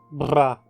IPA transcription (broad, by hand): ʙa